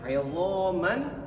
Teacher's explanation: Jadi tanwinnya ini seakan-akan tidak ada tanwin, langsung dimasukkan ke huruf nun.